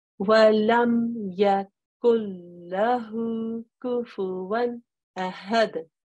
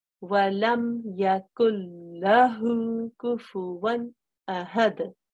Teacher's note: I didn't make any sort of nasal sound whatsoever. Even though there's a noon there, I didn't say anything to do with the noon.